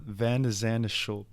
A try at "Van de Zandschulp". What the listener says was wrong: don't know if the D is pronounced that hard. I think it's Zandschulp. That's my guess. that's how they were pronouncing it on the broadcast.